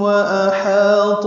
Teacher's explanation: واحاط میم ساکن کے بعد واو آیا اس لیے اظہار شفوی ہوا. احاط میں حمزہ اقصی حلق سے، ہا وسط حلق سے ادا کریں گے، ہا کو 2 حرکات لمبا کرنا ہے، تو پر پڑھنا ہے.